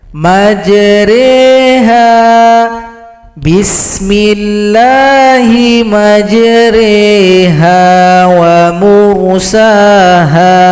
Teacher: re panjang 2 ketukan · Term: imala